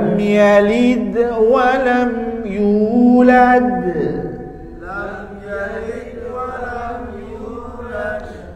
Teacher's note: huruf Dal yang ada di tengah itu juga bacaan qolqalah tapi dia sugro kecil tetap ada pantulan tapi kecil